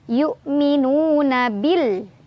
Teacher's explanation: Nu mad tabi'i karena ada waw sukun. Sebelumnya ada dhammah di nun. Cara bacanya panjang 2 harokat.